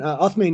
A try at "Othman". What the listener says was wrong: No, you're saying this wrong. No, Atman. It's the French wrote my name with the A.